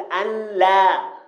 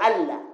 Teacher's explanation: نون ساكنة بعدها اللام تقلب لاما في النطق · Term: إدغام كامل